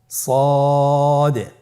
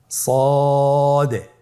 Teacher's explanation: জিহ্বার আগা, সামনের নিচের 2 দাঁতের পেট ও আগার সঙ্গে লাগিয়ে উচ্চারিত হয়। তাহলে আপনারা জিহ্বার আগা, সামনের নিচের 2 দাঁতের পেট ও আগার সঙ্গে লাগিয়ে উচ্চারণ করুন সদে।